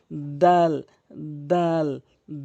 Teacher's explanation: দালটি জিহ্বার আগা, সামনের দুইটি দাঁতের গোড়া থেকে উচ্চারণ করবেন। জিহ্বার আগাটি নিয়ে সামনের দুইটি দাঁতের গোড়া, যেমন দাল দাল দাল, এভাবে উচ্চারণ করবেন।